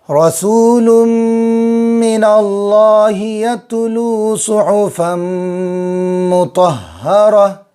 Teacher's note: واو مدہ ہو، الف مدہ ہو، یا مدہ ہو، ان کو ایک ایک الف کے برابر کھینچیں گے